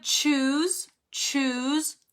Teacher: the sound starts with a stop like the air is blocked first